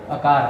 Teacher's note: अकार का स्थान कंठ, आभ्यंतर प्रयत्न है विवृत, बाह्य प्रयत्न संवार नाद घोष, प्राण है अल्प प्राण